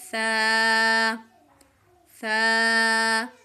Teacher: آپ نے سا میں یاد رکھنا ہے کہ سیٹی کی آواز نہیں نکالنی. سا کو زبان اوپر والے دانتوں کو ٹچ کرنی ہے اور آپ نے پڑھنا ہے سا سا. · सीटी की आवाज नहीं निकालनी सा को जुबान ऊपर वाले दांतों को टच करनी है